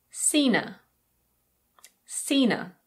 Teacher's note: Her is often reduced to Yep, it's the schwa sound again, and you can drop the H. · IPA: /ə/